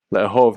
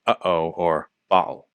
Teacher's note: Le'ahov has a glottal stop as the first consonant in the root. That's the sound in uh-oh or ba'al.